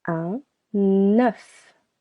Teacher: You can hear we link this preposition to the next word.